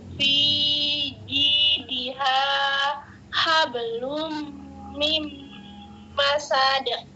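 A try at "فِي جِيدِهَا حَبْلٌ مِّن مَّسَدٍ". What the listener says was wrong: Ditahan. Hablum mim masad karena dia terdiri dari 4 huruf. Coba sekali lagi Mami, jangan kepanjangan masad. Fi jidiha hablum mim masad. Itu namanya mim tasdid.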